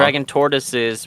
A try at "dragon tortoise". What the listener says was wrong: It sounded like you said dragon, like dragging something. Dragon tortoise.